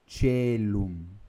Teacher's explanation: Então veja, tanto esse ditongo, AE, quanto o ditongo OE, é pronunciado com o som do E, cellum, tá? E porque ele é pronunciado com o som do E, então o C fica TCH